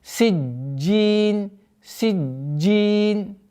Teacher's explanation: Нужно обращать внимание, что долгота появляется после удвоения джима.